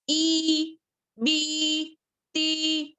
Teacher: आपको 2 हरकत के बराबर खींचना है, अलीफ एक और या. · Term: याए मद्दा